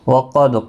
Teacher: وقد قاف مستعلیہ ہے، دال ساکن پر قلقلہ ہوگا